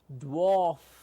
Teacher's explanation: f at the end, also all we hear is the flow of air out